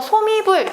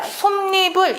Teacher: 합성어 및 파생어에서 앞 음절이 자음으로 끝나고 뒤 음절 모음 이, 야여요로 시작할 때 니은이 새로 생기는 현상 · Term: 니은 첨가 현상